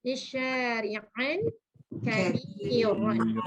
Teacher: Ya, baca tafkhim dan takrir.